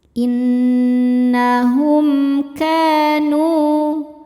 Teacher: Karena mim sukun menghadapi selain mim dan ba yaitu menghadapi hamzah. Cara bacanya mim dibaca jelas. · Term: izhar syafawi